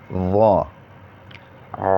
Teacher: اس کو بھی موٹا پڑھیں گے، زا، زا، سین، سین، شین، شین، صاد، صاد، ضاد، ضاد، طا، طا، ظا، ظا۔ موٹا بھی پڑھیں گے اور نرمی سے ادا کریں گے